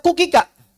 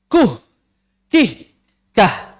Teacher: kalau kita mengucapkan huruf kaf berharokat, maka kita tidak membaca kukika, tapi kuh, kih, kah. Ada huruf ha di belakangnya. Dan itu adalah kebiasaan yang fasih, kebiasaan berbahasa yang fasih dalam bahasa Arab. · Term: ha saket